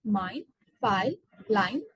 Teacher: The diphthong I, which is a front closing full diphthong where the tongue moves to a closer position as if to produce I vowel sound, and the lips are apart and gradually closing.